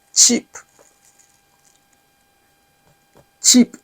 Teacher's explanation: remember here there is always a strong airflow